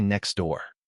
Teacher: If I pronounce it perfectly, as a textbook would suggest, I say next T door, but my tongue has to stop, reset, and then start again to make that T sound.